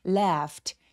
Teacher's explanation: 여기서 에 소리는 굉장히 길어서 apple 할 때의 에 소리입니다.